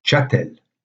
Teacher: partir du 12ème siècle se s ne prenait plus prononcé donc la prononciation correcte de ce mot en ancien français au 12e 13e siècle sera chatel sans le s même s'il s est toujours présent dans la graphie puis finalement